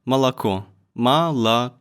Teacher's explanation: not stressed it is pronounced like a for example Malo Malo the last o is stressed it means that it pronounced loud and clear unlike all the other syllables all the other ones I guess they get muffled that's why